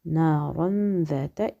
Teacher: نون مخفاة عند الذال نون est caché dans le ذال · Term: إخفاء